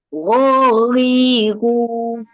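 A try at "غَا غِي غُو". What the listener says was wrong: Bunyi huruf Roin cantik. Cuma panjangkan lagi sedikit.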